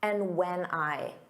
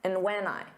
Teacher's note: Those sounds really blend together. And just becomes n. And when just becomes an unstressed when when.